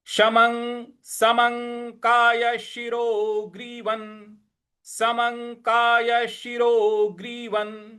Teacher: व के ऊपर जो अनुस्वार है उसका उच्चारण न का ले आएंगे · म के ऊपर जो अनुस्वार है उसका अंग का उच्चारण ले आएंगे